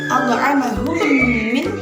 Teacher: Sebagaimana idgham memasukkan, berarti mim mati dimasukkan kepada mim yang kedua, berarti mim 1 tambah mim 2 sama dengan dengung. Dengung dengan ditahan. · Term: idgham mimi